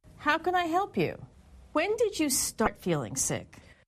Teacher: when she asked a question that began with when or how her intonation was falling